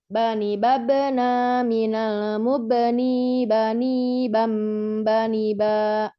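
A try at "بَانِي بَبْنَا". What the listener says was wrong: Nah, babena, nanya ini jangan dipanjangkan, jangan babena, nanya pendek ya. Bu bani babena, gitu ya.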